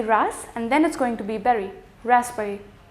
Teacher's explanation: in raspberry I'm not going to pronounce this B